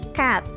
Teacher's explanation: Yang paling nyaring diucapkan itu e-nya, yaitu cat. Keh itu nomor 1, yaitu voiceless stops, ada e nomor 8, low vowel, dan teh nomor 1 juga voiceless stops.